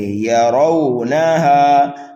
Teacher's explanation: یوم یرونہا، یا اور را کو بھی جلدی پڑھیں گے، نون کو بھی جلدی پڑھیں گے، ہا کو کھینچیں گے، لیکن را کو پر کر کے پڑھیں گے۔